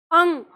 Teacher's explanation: पूरा ग नहीं आएगा। नाक में ही रहनी चाहिए। उससे बाहर नहीं।